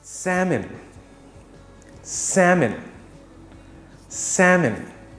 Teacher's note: the l is silent and the m-o-n is pronounced as m-i-n